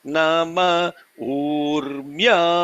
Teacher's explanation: Urmyaya, Rmyaya, Rmya is two matras because it is a long syllable.